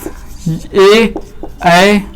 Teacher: अर्थात ए ऐ जो है कहां से उच्चारित होंगे, कंठ तालु से